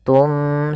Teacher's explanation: Kita balikkan suara nunnya menjadi suara mim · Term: iqlab